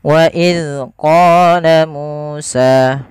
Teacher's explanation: 2 harakat, dan harus sama panjangnya qa, mu, dan sa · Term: mad tabi'i